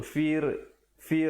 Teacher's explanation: fir ra di situ menjadi nipis